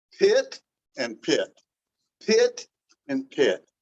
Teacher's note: One of the P's is getting aspirated as we normally would speak it in English